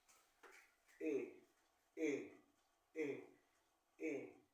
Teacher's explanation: la e es una vocal media anterior